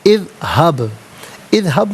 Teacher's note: اذہب، اذہب میں بعض ساکن ہے لیکن حرف قلقلہ ہے تو آواز لوٹتی ہوئی محسوس ہونی چاہیے